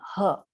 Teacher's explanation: It is kanthavya, kanthya, from the back of the throat.